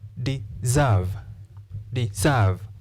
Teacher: case we do not say deserve we say deserve deserve therefore because of the long vowel sound a we stress the second syllable